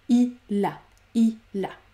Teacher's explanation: J'entends bien le L à la fin du mot il, eh bien, je vais l'ajouter au A qui suit. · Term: l'enchaînement